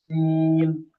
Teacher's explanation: जहां ता में सीटी नहीं आती वहां सीन में सीटी लाजमी आएगी और आवाज इसकी बारीक रहेगी